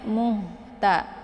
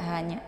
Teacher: ha ini ha besar ya. Ini ada hamasnya muhta. Jadi dialirkan saja